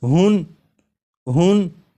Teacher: جب ہا کو پڑھیں گے تو آخر میں نون ساکن کی آواز آئے گی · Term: تنوین